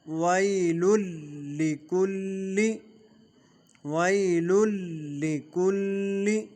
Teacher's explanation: مصدقا لما، ویل لکل، ویل لکل، لام ویل لام پر تنوین ہے، تنوین کے بعد حروف یرملون میں سے لام آ رہا ہے، ادغام بلا غنہ ہوگا، اور وی کی یا جو ہے یہ یا لین ہے، اس کو کھینچیں گے نہیں۔